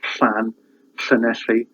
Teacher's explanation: It's just like a h sound, but with your tongue put in the position as if you're going to say l, as in lollipop. So the air comes around the side of your mouth.